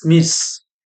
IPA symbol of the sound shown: s